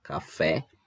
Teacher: o café Então é a última sílaba que é mais forte a última sílaba é a tônica Então ela é uma palavra oxítona